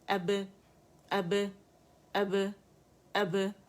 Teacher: Side وے stretching نہیں ہے اس میں. امالہ نہیں کرنا ہے کسی صورت. ہم نے کسی بے تے سے امالہ نہیں کریں گے، ٹھیک ہے. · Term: قلقلہ